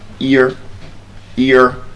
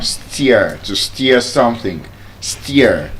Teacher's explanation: We have the ear sound, E and the schwa sound.